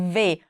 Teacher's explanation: o v é o meu lábio inferior com dente aqui superior mordendo